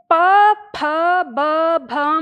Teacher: तो यह जो प वर्ग है हमारा इसका उच्चारण हमारे होठों से होता है। हम होठ आपस में मिलाकर तब हम ध्वनि उत्पन्न करते हैं।